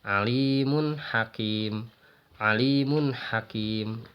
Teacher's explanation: Di sini jelas domah tainnya ya, tidak disertai dengan dengung. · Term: izhar